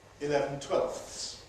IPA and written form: ɪˈlevn̩ ˈtweɫfθs (eleven twelfths)